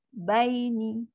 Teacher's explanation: Bai ni bunyi dia turun ke bawah. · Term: huruf lin